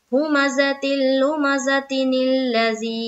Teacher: نیلا، ذی یا ساکن سے پہلے زیر ہے، یا مدہ ہوگی، یا مدہ کو ایک الف کی مقدار کے باقدر کھینچ کر پڑھیں گے